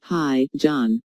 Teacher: notice the rising intonation here is excited to hear from John and is very pleased that he called her